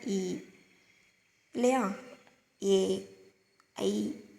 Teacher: நாக்கின் அடி ஓரம் மேல்வாய் பல்லை பொருந்தும் முயற்சியால் பிறக்குது